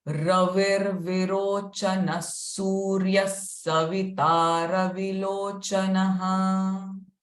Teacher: before Virochana, the R sound will come.